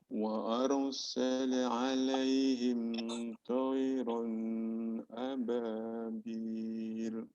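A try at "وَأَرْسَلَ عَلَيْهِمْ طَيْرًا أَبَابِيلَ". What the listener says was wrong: Pertama, A-nya dikasarkan ya. Baru di sini hukum tanwin pada ro di sini adalah izhar. Jadi dia harus segera kembali kepada huruf setelahnya.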